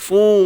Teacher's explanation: Pastikan bunyi hidung tuan-tuan. Bi gunnah. Jangan kosong. Kalau kosong fu.